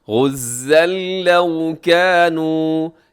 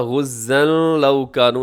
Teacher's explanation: کے، غزن لو کانوا، یہاں غزن لو کانوا ایسے نہیں کرنا، یہاں پہ نون کی آواز تو بالکل نہیں آنی چاہیے ، غزن لو کانوا عندنا، یہاں نون ساکن کے بعد دال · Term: بغیر غننے کے